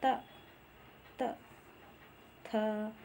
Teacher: ऊपर के दांतों पर जीभ लगाने से होता है तो उसे क्या कहते हैं, दंत वर्ण कहते हैं।